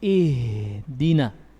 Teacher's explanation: Ya, ha ini memiliki sifat rakhawa. Suaranya ngalir. Makanya ketika kita membaca ihdinas sirata, ini ihdina, suaranya ngalir, juga napasnya ngalir.